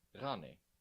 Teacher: Rani sounds a lot like the French R, pronounced in the back of the throat. This is definitely one of the more challenging sounds for English speakers, but practice makes perfect.